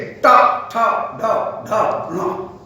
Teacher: जब मूर्धा उनसे अवरोध उत्पन्न किया गया तो मूर्धा से अवरोध प्रकट करने पर जीव जहां पर कुछ पलट करके झटके से गिरे उसका नाम है मूर्धन्य ध्वनि। जैसे ट ठ ड ढ ण, ये मूर्धन्य ध्वनि है